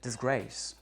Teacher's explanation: Si vous rajoutez un préfixe, comme par exemple pour le mot disgrace, et bien en fait, le dis est inaccentué, c'est une syllabe qu'on a rajouté et grace est bien le mot d'une syllabe qui lui porte un accent et est prononcé pleinement